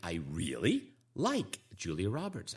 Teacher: i really like julia roberts again my intonation goes up